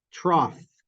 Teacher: the GH in IPA I'd write it with an F yeah that's the fricative